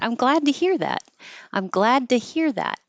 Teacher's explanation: the T changes to a d because it's between the voiced du and glad and the voiced vowel